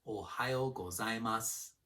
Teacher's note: Let's break this one into 2 parts. Ohayo starts with the low pitch on the first sound, followed by high pitch for the next 3 sounds. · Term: pitch accent